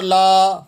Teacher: 5 انگلی کی مقدار سے آپ کھینچ کے پڑھیں گے، یہ بڑا مد ہے، یعنی 5 سیکنڈ تک آپ اسے کھینچ کے ادا کریں گے۔